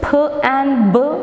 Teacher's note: so we have bilabial plosives p and B